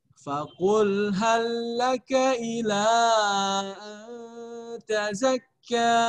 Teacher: lam yang pertama itu dianggap tidak ada keberadaannya. Jadi tekan saja, tidak perlu ditahan.